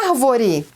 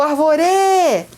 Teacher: bem na sílaba tônica, que é ar. Não é a última, não é a penúltima, é a antepenúltima. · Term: proparoxítona